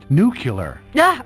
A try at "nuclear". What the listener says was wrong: It's nuclear. You're adding a U in there.